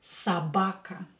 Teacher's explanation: when o is not stressed we pronounce it as a